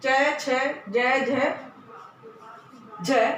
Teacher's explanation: च वर्ग पूरा, च छ ज झ झ ए स और ये सारे तालु से बोले जाएंगे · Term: तालव्य